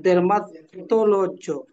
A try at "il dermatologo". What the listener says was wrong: ইল dermatologo, গো হবে।